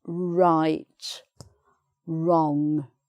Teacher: know that sometimes there's a word beginning w r which is you don't make the w sound you just make the r sound